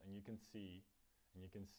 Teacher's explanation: to D na konci toho and Myslím si že ho tam pravděpodobně vynechala